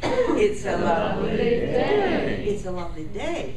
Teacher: day was longer, louder, higher in pitch, and the peak of the information is in the vowel because we said it very clearly. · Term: focus word